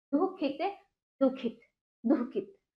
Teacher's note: हल्का सा इसमें हा का उच्चारण बीच में होगा।